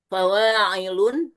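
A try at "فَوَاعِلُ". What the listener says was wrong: Fawailu. Fawailu. Nggak boleh tanwin. Ada alif selepasnya dua huruf.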